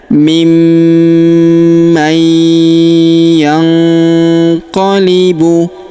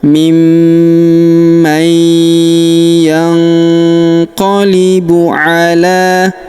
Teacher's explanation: Huruf la kita panjangkan 2 harokat karena di atasnya terdapat alif kecil, kemudian di depannya terdapat alif bengkok atau alif maksoroh ini tidak dibaca atau tidak dianggap ya.